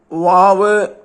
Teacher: വാവിൽ രണ്ട് ചുണ്ടുകളുടെ മധ്യഭാഗം അല്പം തുറന്നിരിക്കണം